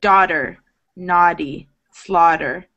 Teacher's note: if I pronounce this naturally, not so slowly, daughter, naughty, slaughter, the T turns into a D sound